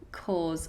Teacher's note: So we have this long or vowel in the middle.